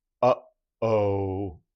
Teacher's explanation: I'm stopping it at my vocal folds. Uh, uh, and then releasing it, and that becomes that uh-oh, that little bit of a shock on. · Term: glottal